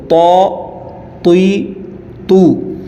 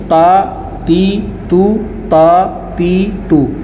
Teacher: طا جو ہے یہ حروف مستعلیہ میں سے ہے تو اس کو موٹی آواز کر کے پڑھا جائے گا